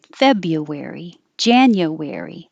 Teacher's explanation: We make the U more of a Y. It gets shorter. You can say you, January, February, but it's more common to use a Y whenever possible.